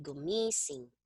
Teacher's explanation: you're going to place the stress on the second to the last syllable